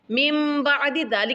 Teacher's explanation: نون ساکن کے بعد جب با آ جائے تو نون کو میم میں بدلتے ہیں، اس کو اقلاب بولتے ہیں۔